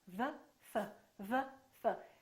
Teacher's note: The position of the lips is the same, except one is voiced and one is voiceless. One uses the vocal cords and one doesn't.